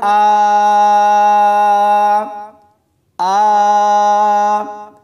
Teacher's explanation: حمزہ کے اوپر کھڑی زبر اور مد ہے، تو اس کو 3 سے 4 الف کی مقدار تک کھینچ کر پڑھیں گے